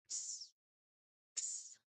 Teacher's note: the back of the tongue blocks the air, and then for the S, the tongue tip moves forward for narrow channel. So two quick movements um is what you will be doing here just to create two fast puffs of air.